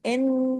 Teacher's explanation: جب ڈبل نون ہے تو غنہ بھی بڑا ہوگا، اکمل غنہ اس کو کہتے ہیں ، اکمل غنہ، آواز دیر تک ناک میں چھپے گی، ان،